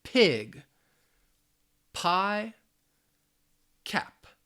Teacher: with the p sound the lips are closed you want to stop that air and it's also aspirated